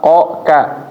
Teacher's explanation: Belakang banget posisinya. Belakang ini ketemu apa? Iya langit-langit atasnya ya. Jadi kalau kita mengucapkan qo nah ini kayak nempel qo ka. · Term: makhraj qof dan kaf